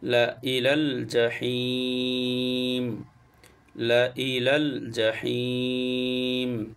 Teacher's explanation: পাশে জুম্ম মদের হরফ এবার মদের হরফের পরের হরফে হয়েছে সেজন্য মদ্দে আরজি তিন আলিফটা নিয়ে পড়তে হয়